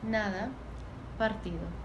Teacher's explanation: Los mexicanos mantienen la D entre vocales, al contrario del español hablado en Cuba, Puerto Rico y República Dominicana. En México, la pronunciación de la D es claramente de esta posición.